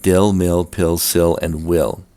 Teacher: The second has to do with the feel-fill merger. Here the vowels E and I are both pronounced I before L sounds.